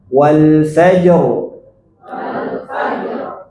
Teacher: sukun pertama Jim sukun keduanya ro nah rnya tebal Kenapa tebal sebelumnya sukun sebelumnya fat fathah ya Coba kita ulang · Sukun pertama jim, sukun keduanya ro. Nah, ro-nya tebal.